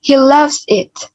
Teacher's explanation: Di bagian kata loves, kita berikan pengubahan nada dan juga perpanjangan vowel.